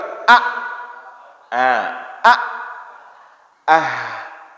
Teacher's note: Pangkal tenggorokan mengeluarkan a dan h